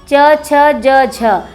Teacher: और च वर्ग का उच्चारण होता है, स्थान होता है तालु।